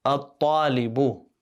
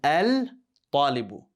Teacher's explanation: we're going to get rid of the L sound because you notice there is a shadda on the ta.